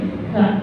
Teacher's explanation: Kalau kaf itu ngucapinnya itu harus keluar angin. Karena huruf kaf ini kesifatan sifat hamas atau disebutnya hukumi hamas kalau tadi.